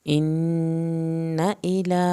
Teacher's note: नून की शद पे देर लगाएं, इला खड़ी ज़बर को खींच के पढ़ें।